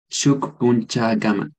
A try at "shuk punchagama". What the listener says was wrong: Eso, shuk punchagama.